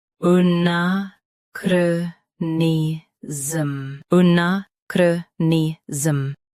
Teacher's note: Both US and UK have the same pronunciation of this word. Stress na. Keep chro and ni smooth. And finish with a soft zhm.